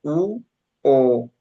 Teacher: Si se fijan, nuestros labios o nuestra boca toma una forma redonda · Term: vocales redondas